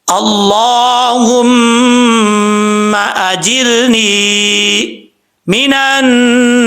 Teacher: مد عارض وقفی کی صورت میں 2 سے 2.5 الف کی مقدار لمبا کر کے آپ پڑھ سکتے ہیں. نہیں کرنا چاہتے, 1 الف کی مقدار لمبا کر کے پڑھنا چاہتے ہیں, وقف کرنا چاہتے ہیں, تب بھی کوئی پرابلم نہیں ہے.